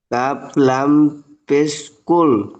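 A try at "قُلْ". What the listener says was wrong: এটা কাফ নয়, এটা কফ।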